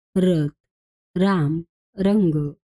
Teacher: उच्चार करताना जिभेची कंपन होते. र हे कंपित व्यंजन आहे कारण त्याचा उच्चार करताना जीभ वेगाने कंप पावते.